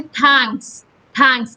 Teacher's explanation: के और एस के बीच में कोई वॉवल नहीं है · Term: कॉन्सोनेंट क्लस्टर